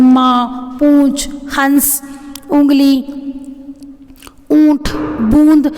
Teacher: चंद्र बिंदु यानी कि इसका उच्चारण करते समय हवा नाक और मुंह दोनों से निकलती है